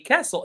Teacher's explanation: We call them castles. and the T is silent.